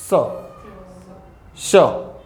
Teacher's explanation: આખું મોઢું નથી ખોલતા પણ એ જે હવા છે ને એ સંઘર્ષ સાથે બહાર નીકળે છે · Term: સંઘર્ષી વ્યંજન